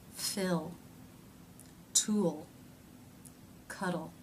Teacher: the tongue fattens up towards the middle and raises slightly as the lips round a bit in the second half of the dark l sound the tongue · the middle and raises slightly as the lips round a bit in the second half of the dark l sound the tongue moves forward in fact this vowel like sound happens as the tongue is